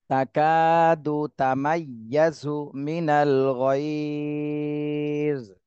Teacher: কাফে শুধু এক আলিফ টান দিতে হবে, জবরের বামে খালি আলিফ, মদের হরফ হয়েছে।